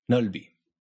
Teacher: the b gets knocked into the beginning of the second syllable, and you can actually hear the sound